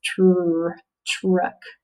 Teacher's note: sometimes the tr blend sounds like ch